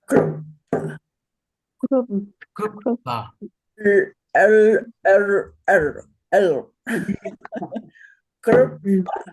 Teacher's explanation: a rare word with one of the only cases of a vocalic L that you will see. But you will see this word, and it's pronounced krupta.